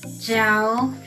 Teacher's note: dropping tone, which is the fourth tone